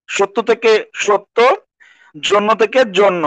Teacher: পদের মধ্যে বা অন্তর জফলা যুক্ত হলে সেটি ও কারান্ত হয়। সত্য থেকে সত্য, জন্য থেকে জন্য, মানে জফলাটার উচ্চারণ ওকারের মতো হয়।